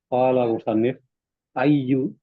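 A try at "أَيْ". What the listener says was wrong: Ay, Sukun ya.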